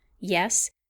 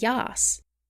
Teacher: then there is the closed e of the south and the open e of the north